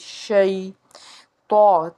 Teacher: شین جو ہے حرف شجریہ ہے، آواز منہ میں پھیلے گی